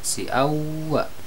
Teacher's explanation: ini adalah idgham bi gunnah atau idgham dengan dengung karena ada tanwin menghadapi huruf waw